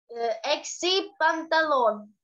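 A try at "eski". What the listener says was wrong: Эски. Экси – это минус. Эски. Вот, молодец.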